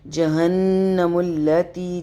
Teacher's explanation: جہن نون مشدد پہ غنہ nasal sound 2 second کے لیے